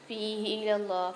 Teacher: اللہ کے لام کو موٹا کر کے پڑھیں گے اور کھینچ کے ہی پڑھیں گے